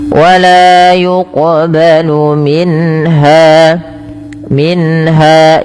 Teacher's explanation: Jelaskan suara nunnya ketika bertemu dengan ha karena ia izhar halq